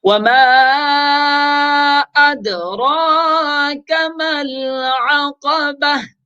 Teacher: ادراک، اد دال ساکن ہے تو دال میں قلقلہ کریں گے